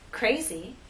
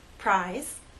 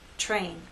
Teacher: R is a voice sound but after these three consonant sounds it begins voiceless and then becomes voiced as we go into the next vowel sound